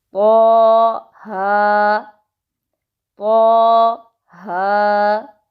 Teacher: آگے جو 2 حروف جڑے ہوئے ہیں طا ہا، ان کے اوپر کھڑی حرکات ہے جن کو صرف 2 سیکنڈز کے لیے پڑھا جاتا ہے۔